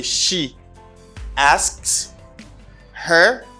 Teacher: And for third person of singular, you just say she asks her, but you don't pronounce H.